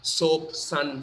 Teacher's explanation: by a regular s not with any accent regular s which is the dental s